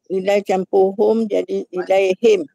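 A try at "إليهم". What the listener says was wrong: Bukan ilai. Ila campur hum tau. Bukan ila campur him. Ila campur hum baru jadi ilaihim. Bukan ila campur him, ila campur hum.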